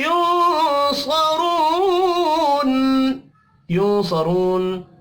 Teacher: नून साकिन के बाद सौद है, यहाँ पर इख्फा हकीकी होगा। सरून, सौद और रॉ पर पढ़े जाएंगे।